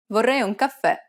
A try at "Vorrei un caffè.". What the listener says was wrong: Did you stress the final syllable? Remember that the accent marker indicates that the syllable needs to be stressed. And since it's a downward stroke, it'll be more of an open E sound, like the E in red.